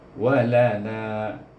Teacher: nak baca walana, na panjangnya 4 atau 5 harakah, kerana selepas alif ada hamzah dalam dua kalimah, maka kita guna mad jaiz munfasil.